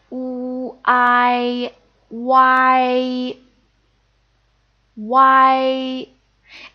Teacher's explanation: it's just like adding the oo sound in front of I, put it together. Ooh, I, Y. It's kind of similar to the English word why, but the tone is slightly different, and the A is more prominent.